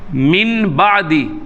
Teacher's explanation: اس با کو، نون ساکن کو میم کی آواز میں بدلیں گے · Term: اقلاب